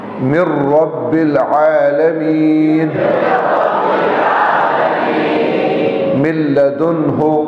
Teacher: اور یرملون آ جائیں تو پھر جو ہے نا ادغام ہوگا. لام اور را ہو یرملون میں سے تو ادغام ہوگا بغیر غننے کے